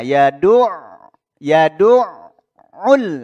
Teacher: langsung kita masuk ke makhraj huruf ainnya di sini ditenggorokkan bagian tengah